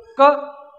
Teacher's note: आ रही है, का से पूछो कहां से हो, बोलो क, अपने आप आवाज आ रही है कंठ से, कंठ पे एकदम प्रेशर हो रहा है